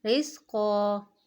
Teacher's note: دو زبر کے وقف میں ایک الف کے برابر کھینچ کر پڑھیں گے